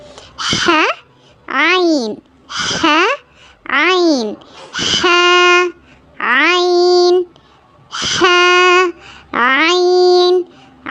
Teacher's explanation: Bottom middle அப்பர் அதாவது கீழ் பகுதி நடுப்பகுதி மேற்பகுதி. இதுல மிடில் பகுதியில நடுப்பகுதியில இருந்து வரக்கூடிய லெட்டர்ஸ்தான் ஹ ஐன்.